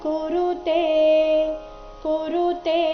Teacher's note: ಇಲ್ಲಿ ತೇ ಮಾತ್ರ ದೀರ್ಘ ಬರಬೇಕು.